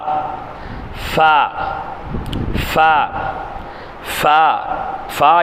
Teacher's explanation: இரு உதடுகளையும் லேசாக சேர்த்து காற்று வெளியாகுமாறு உச்சரித்தல்